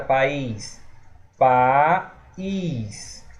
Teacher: O A se separou do I. Logo, essas duas vogais aqui se separaram. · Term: Hiato